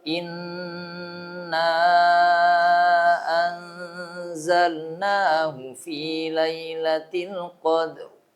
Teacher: Tebal ya, ra-nya dibaca karena berada di akhir, sebelumnya sukun ada fathah. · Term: tafkhim